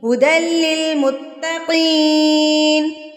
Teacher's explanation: قاف پر کر کے پڑھا جائے گا. یہ قاف ہے، کاف نہیں ہے، یہ موٹا قاف ہے، پر کر کے پڑھا جاتا ہے